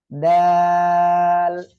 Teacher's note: জিহ্বার আগা সামনের উপরে 2 দাঁতের গোড়া লাগিয়ে উচ্চারণ হবে